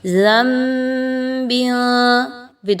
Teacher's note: نون ساکن کے بعد با کا حرف آ جانا اقلاب کی طرف نشاندہی کر رہا ہے، یعنی آپ نے یہاں پہ نون کی آواز کو میم کی آواز میں بدلنا ہے